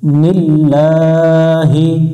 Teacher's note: আল্লাহ শব্দের ডাইনে জের হলে লামটাকে পাতলা করে পড়তে হবে , অর্থাৎ লা পড়তে হবে, তখন আবার ল পড়া যাবে না।